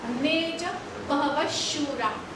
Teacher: त्याचा उच्चार विसर्गाचा उच्चार श होतो जर पुढे श आला तो